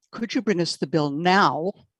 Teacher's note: because he's stressing now that makes it sound angry